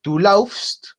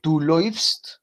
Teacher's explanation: Entonces, si tenemos un A con umlaut, como esta que aparece acá, al lado de esta U, no suena AU, sino que suena como OI